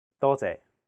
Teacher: the second character is a low flat tone sixth tone · the first character is in high flat tone first tone it means many though and the second character is a low